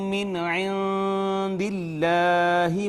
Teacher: اس میں جلالت کا ما قبل چونکہ مکسور ہے لہٰذا اس میں جلالت کو مرقق پڑھیں گے، باریک پڑھیں گے